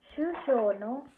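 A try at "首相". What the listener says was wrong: pronunciation ಹೋಯ್ತು ದೀರ್ಘಾಕ್ಷರ ಅಲ್ಲ ಶುಶ ಬರಿ ಶೂ ಅಷ್ಟೇ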